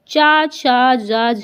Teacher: ह यह आपके संघर्षी व्यंजन होते हैं च छ ज झा यह होते आपके स्पर्शी और संघर्षी व्यंजन